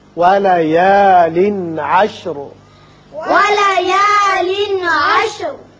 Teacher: یہاں تنوین کے بعد عین جو کہ حروف حلقی میں سے ہے آ رہا ہے، لہذا یہاں اظہار حلقی ہوگا